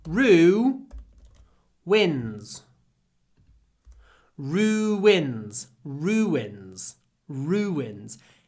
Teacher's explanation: you don't need to put a w sound between the vowels but we do we don't like two vowels next to each other so we